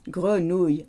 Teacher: People say grenouille with a oui at the end. It's not a oui, it's a y.